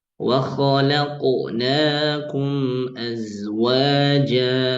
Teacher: qalqalahnya jangan sampai ee over kayak kesan ada hamzahnya. Walaqu bahkan agak ditekan ini jangan ya.